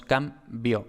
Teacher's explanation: Y ya, ya este adverbio es tónico, sin es una preposición, son átonas, pero la N de sin se velariza en contacto con la K de cambio. Y en cambio tenemos que la B es oclusiva precisamente porque le precede una nasal y pues ya simplemente tenemos cambio, este diptongo io, por tanto lo marcamos debajo del I.